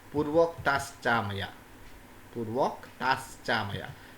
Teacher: this visarga you read here, this will be changed to palatal sa as per the visarga sandhi